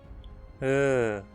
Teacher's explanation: Vogal central média não arredondada. A língua fica exatamente no meio da boca, ou seja, completamente relaxada, e os lábios também não se arredondam.